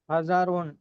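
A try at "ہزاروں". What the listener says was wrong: हजारों। हजारोन नहीं है, नून तब होता है जब नून गुना है। हजारों, हल्का सा नेजल साउंड आएगी, हजारों।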